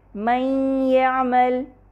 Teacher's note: نون ساکنہ یا سے مدغم ہو رہا ہے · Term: ادغام